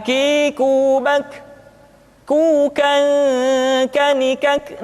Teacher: diucapkan dengan mengangkat pangkal lidah kita ke posisi di depan huruf qof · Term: huruf k